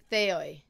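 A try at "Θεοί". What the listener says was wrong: Thei. It is Thei, but Theoi is fine. Thei, like in modern Greek, it's like the OI is E sound, but in ancient Greek it was like an OI sound, I'm pretty sure.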